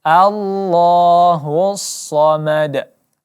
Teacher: di sini kita bunyi qolqolah karena tuh kita pantulkan